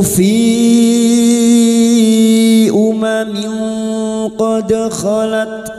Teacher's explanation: Fi bertemunya mat dengan hamzah di lain kalimat. Mad jaiz munfasil.